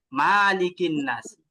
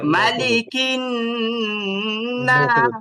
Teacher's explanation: অনেকে এই যে এইভাবে পড়েন মালিকিন নাস, এটা কিন্তু অনেক বড় ভুল। এখানে মিমে কিন্তু কোনো টান নাই, এখানে টান দেওয়াই যাবে না